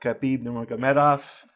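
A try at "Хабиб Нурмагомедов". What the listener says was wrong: That was really good, man. I think no, it's not Khabib though. We say it's like Khabib. The KH is like they're like a French R, But the surname, man, you killed it. I'm like Nurmagomedov.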